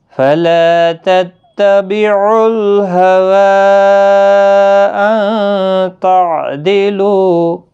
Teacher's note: مد منفصل ہے، 3 الف کی مقدار کے برابر کھینچیں گے